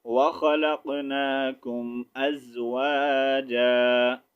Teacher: یہاں پر جیم ٹو زبر جن ہے لیکن وقف کی صورت میں ہم نے اس کو جا پڑھنا ہے. ایک زبر کو نہیں پڑھیں گے تو کیا ہوگا جیم الف زبر جا.